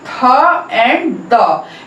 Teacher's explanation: Dental means दांत की सहायता से। Dental sounds are produced with the help of the tip of the tongue and the upper set of the teeth. मतलब dental sound में जो हमारी टिप होती है, टंग का बिल्कुल आगे वाला हिस्सा होता है वो और अपर सेट ऑफ जो टीथ हैं उनसे मिलके साउंड प्रोड्यूस होती है।